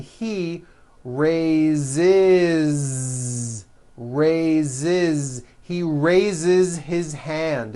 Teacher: even though it is spelled with an S it's pronounced with a voiced Z